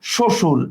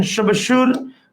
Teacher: শব্দের আদিতে অবস্থিত ব্যঞ্জন বর্ণে যুক্ত বফলা উচ্চারিত হয় না